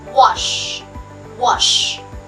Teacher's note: there is no vibration in the consonants sh